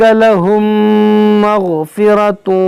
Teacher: میم ساکن کے بعد میم ہے، یہاں پر ادغام شفوی ہوگا